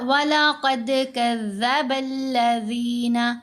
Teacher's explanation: اچھا، یہاں ہم نے پڑھا وَلَقَدْ كَذَّبَ الَّذِينَ، قاف کو موٹا پڑھیں گے، دال کے ساتھ ملائیں گے. دال یہاں پر ساکن ہے تو ہم نے اس کے اوپر قلقلہ ادا کرنا ہے کیونکہ یہ حروف قلقلہ میں شامل ہے.